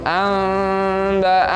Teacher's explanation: Amba'ahum, ya seperti tadi ada nun mati bertemu dengan ba, suaranya seperti itu. Amba'ahum, jadi suara nunnya masuk ke ba-nya seperti ada mimnya